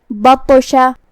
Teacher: شین کی ادائیگی زبان اور اوپر کے تالوں کے درمیان سے ہے، ہم شین کو وہیں سے پڑھیں گے اور اسے ظاہر کریں گے۔ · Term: حرف الشین